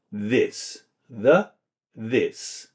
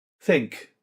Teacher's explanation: Voiced, so we can hear the, and we can hear the TH in this, the, this, versus unvoiced, think